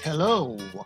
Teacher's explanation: We add an U sound at the end of the O.